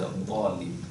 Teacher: it is pronounced without having the tip of the tongue going out